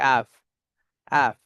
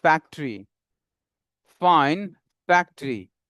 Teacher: উপরের দাঁত নিচের ঠোঁটে এসে কামড় লাগবে, উপরের দাঁত নিচের ঠোঁটে এসে কামড় লাগবে, অ্যাপ অ্যাপ।